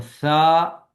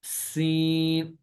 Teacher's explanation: سا کو نرمی سے اور سین کو سیٹی کی آواز کے ساتھ